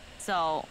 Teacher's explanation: It's a third tone. It's a falling, rising tone.